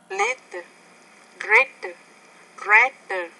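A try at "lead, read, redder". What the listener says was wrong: Now you're having trouble with the R there. It's read, redder.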